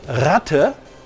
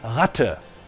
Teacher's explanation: The uvular trill, Ratte, can be used as a free variant of the voiced uvular fricative